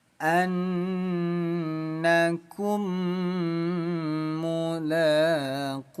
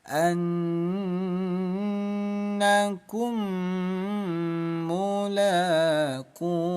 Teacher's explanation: Cara bacanya dengung 2 ketukan. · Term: gunnah